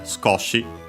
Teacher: The accent is on the ko. The U of su is barely heard if at all because it's between our voice consonants.